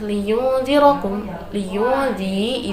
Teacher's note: liyunzi itu bacaan ikhfa hakiki sebab nun bertemu dengan huruf zal. Lalu lafaz liyunzirakum, ra di sini dibaca tafhim atau tebal.